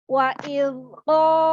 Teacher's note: huruf qaf ini dari mana makhrajnya? Yaitu adalah dari pangkal lidah. Dan sifat huruf qaf ini adalah isti'la.